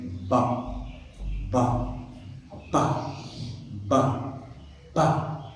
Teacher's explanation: What is plasive? So when we want to produce sound, so air, you know, stops and suddenly to be released for the production of sound.